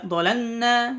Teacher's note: Jangan dimasukkan ke nun, tapi jelaskan lamnya.